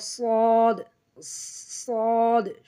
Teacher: জিহ্বার আগা সামনের নিচে দুই দাঁতের পেট ও আগার সঙ্গে লাগাইয়া